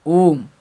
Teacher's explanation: मात्रा मतलब इसमें जो समयावधि लगता है ना, 3 पार्ट का समयावधि लगता है। जैसे अ से थोड़ा सा ज़्यादा आ से ज़्यादा आ, खींचना जो हुआ ना, ओम, अब पूरा नहीं होगा। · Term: प्लुत स्वर